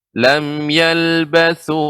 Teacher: lam yalbasu, ini ujung lidah dengan gigi seri atas